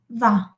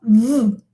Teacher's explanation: It does not sound va. It sounds v. Okay, with friction. And it is voiced. Okay. There is a vibration of your vocal folds here.